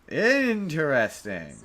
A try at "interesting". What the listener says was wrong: No, no, you're still putting too much emphasis on the entire word. The way you have it spelled, it's interesting.